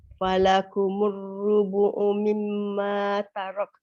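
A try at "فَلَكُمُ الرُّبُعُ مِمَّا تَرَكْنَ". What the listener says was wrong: Bawa lidah ke atas. Dia kalau kita sebut dia wasal tarakna. Lidah kita ke atas kan dia tarakn. Dia ada ken. Memang susah sikit tapi cara gitulah. Macam mana kita nak sebut dia berbaris macam itulah dia.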